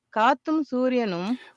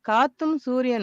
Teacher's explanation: We see that really strong rising on the first syllable gat. காத்தும் சூரியனும் And then it kind of starts petering out from there.